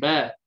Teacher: ba dua bibir dalam kita sebut tutup tapi dalam keadaan sedikit berat, sedangkan mim tersebut contoh tutup dua bibir tadi dalam keadaan ringan. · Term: huruf ba